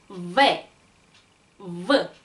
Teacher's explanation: 이 알파벳 V를 발음을 하실 때 아래 입술과 위에 이빨이 떨어지면서 나는 소리예요 · 왜 V. 마찬가지로 유성음이기 때문에 목소리 소리가 더 많이 들린다는 거 주의하시고요